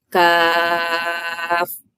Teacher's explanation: Kaf tu kena panjang 6 harakat.